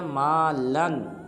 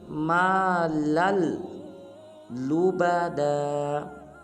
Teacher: بعض مسلمان اس حرف کو پڑھ دیتے ہیں مالن، یہ بالکل غلط ہے، بلکہ لام کو آگے لام مشدد کے ساتھ ملائیں گے اور پر پڑھیں گے مالل لبدا۔